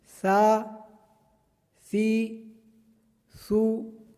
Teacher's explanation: ثا کے اندر سیٹی کی طرح آواز نہیں آنی چاہیے۔